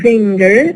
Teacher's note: We go back to our example in which we have place assimilation, change in the place of articulation. The alveolar n becomes a velar ing when followed by a velar consonant. N in finger, it becomes alveolar becoming velar because it is followed by the ka or the ga velar.